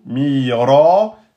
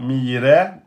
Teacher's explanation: mi deux temps, ra deux temps avec emphatisation, mira et pas mire, mira.